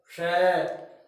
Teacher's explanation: तो यहाँ mouth organ के अंदर जीभ है, वो टीथ रिज को या अन्य किसी ऑर्गन को एकदम रुकावट के साथ टच न करके हल्का सा क्लोज आती है · इनमें इस तरह का कोई स्टॉपेज नहीं आता, यह हवा का कंप्लीट क्लोजर नहीं होता, केवल पार्शियल क्लोजर है। हल्की सी रुकावट आती है, इसमें ऑर्गन टच नहीं करते हैं। तो ये है, आप आसानी से हवा बिना रुकावट की सीधी बाहर जा रही है, इसमें माउथ ऑर्गन टच नहीं हुए हैं। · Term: फ्रिकटिव